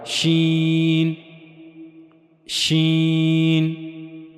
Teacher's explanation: शीन की अदायगी के लिए जबान का दरमियानी हिस्सा और मुंह का ऊपर वाला हिस्सा शी यानी जबान का दरमियानी हिस्सा मुंह के ऊपर वाले हिस्से की तरफ उठेगा लेकिन उससे जाकर मिलेगा नहीं